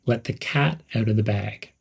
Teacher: There's a slight pause between let and the cat.